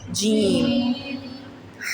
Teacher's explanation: اس کی سیٹی نہیں نکالتے، اس کی سیٹی۔ جیم، زبان کے درمیان سے اور تالو کے درمیان سے کیا ادا ہوتا ہے؟